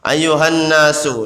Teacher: nunnya bertasdid, hukum bacanya hunna, dibaca dengung dua ketukan atau dua harokat